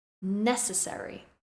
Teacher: I stress the first syllable necessary